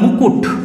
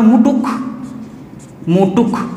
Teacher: দেখো ক আর ট নিজেদের জায়গা চেঞ্জ করে দিয়েছে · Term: ধ্বনির স্থানান্তর